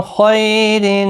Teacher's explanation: اور خا مستعلیہ ہے، پر پڑھا جائے گا.